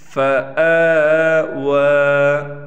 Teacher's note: واو پر بھی کڑا زبر ہے، اس کو بھی 1 الف کے برابر کھینچیں گے۔